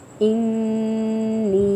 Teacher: نون مشدد ہے، غنہ ہو رہا ہے، ایک الف کے برابر ٹائم دے کے یا مدہ ادا کریں گے۔